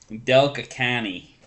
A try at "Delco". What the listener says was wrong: Delco County? Delco. you don't need to put county at the end. Del is Delaware. Co.